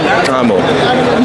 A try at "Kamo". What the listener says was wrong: There's no click. Yeah, it's just Kamo.